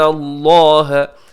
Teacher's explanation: لفظ اللہ کو پر پڑھیے گا, اس سے پہلے زبر